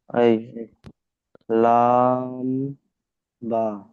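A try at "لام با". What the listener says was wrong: বা অক্ষর টান দিয়ে বলেন।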